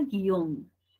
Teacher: la u no suena no suena pero la i y la o se unen en un diptongo